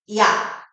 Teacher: 이 뒤에 있는 야를 발음할 때는요, 아와 다르게 야, 이에서 아로 소리가 달라지면서 모양과 혀의 위치가 달라짐을 느낄 수가 있어요. 이게 바로 이중모음이에요.